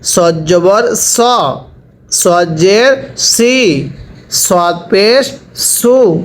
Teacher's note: সটা উচ্চারণের সময় ঠোঁটগুলো হালকা গোল হবে।